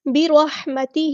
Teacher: ہا کو وسطی لیکن مڈل تھروٹ سے ادا کرنا ہے ، را ہمارا ہیوی لیٹر پورا ادا کریں گے، اور یہاں